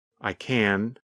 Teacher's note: When we say the positive form, we pronounce the letter N longer. The N sound N lasts longer than in the negative form.